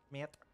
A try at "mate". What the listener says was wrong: I hate the way you say that. Yeah, it's so nasally.